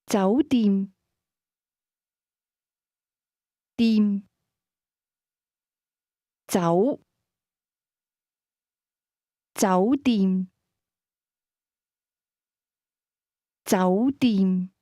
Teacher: Hotel is pronounced with a combination of mid- rising and midlevel tones.